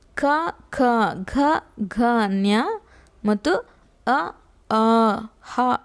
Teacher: ಕಂಠ ಭಾಗದಲ್ಲಿ ಹುಟ್ಟುವಂಥ ಅಕ್ಷರಗಳಿಗೆ ಕಂಠ್ಯ ಅಕ್ಷರಗಳು ಅಂತ ಕರೀತಾರೆ.